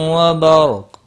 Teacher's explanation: را ساکن سے پہلے زبر ہے، پور پڑھا جائے گا